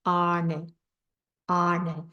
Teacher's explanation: when we say to be, arne, it's the retroflex na